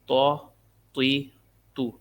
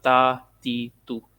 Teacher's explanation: اس طا کو بھی موٹا پڑھنا ہے تاکہ یہ تا اور طا کا فرق رہے